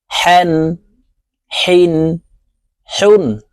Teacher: হা হরফ হলকের মধ্যখান থেকে উচ্চারণ করতে হবে